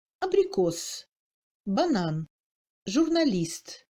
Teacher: Dans les syllabes atones, en position initiale et prétonique, précédant immédiatement la syllabe accentuée, toujours en suivant une consonne dure, le A devient plus court. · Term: premier degré de réduction